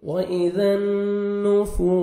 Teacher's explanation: وَإِذَا النُّفُوسُ واو مد ہے 1 سیکنڈ فا کو کھینچیں گے اور سین کو سٹی سے ادا کریں گے.